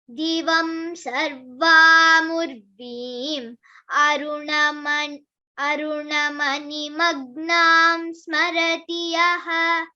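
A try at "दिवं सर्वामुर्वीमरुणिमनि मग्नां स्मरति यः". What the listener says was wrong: Aruni mani, it is not aruna, it is aruni mani. Aruni mani magnam smarati yaha.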